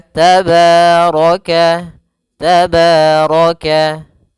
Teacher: Kemudian ra-nya dibaca tebal karena dia ra berharakat fathah.